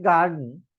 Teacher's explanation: या गार्डन word मध्ये the first syllable is stress there because it's a noun. हे noun असल्यामुळे पहिल्या सिलॅबल वरती या ठिकाणी स्ट्रेस दिलेला आहे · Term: वर्ड ट्रेस